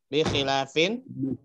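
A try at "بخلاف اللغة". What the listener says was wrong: Tidak tanwin, ada mudhaf ilaih sesudahnya. Bi khilafil lugha al-urubiyati mathalan. Bi khilafil lughati al-urubiyati mathalan.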